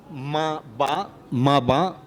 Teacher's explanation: ma, ba are labial sounds, okay? Why are labial? Because I use the lips